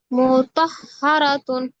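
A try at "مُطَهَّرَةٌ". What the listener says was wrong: মুতাহহারাতুন। মু টান হয়ে যাচ্ছে আপু। মিমে টান হচ্ছে, টানটা হবে না। মুতাহহারাতুন।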